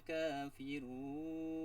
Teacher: kafirun itu mad arid lis sukun dibaca 2 sampai 4 harokat panjangnya